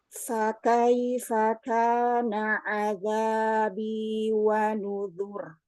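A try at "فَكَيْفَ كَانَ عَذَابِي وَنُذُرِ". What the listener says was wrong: Nah, hati-hati ya, Umi, di huruf kaf jangan kebanyakan hamas. Dia juga punya syiddah.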